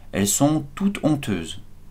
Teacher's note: h aspiré qui ne permet pas de faire la liaison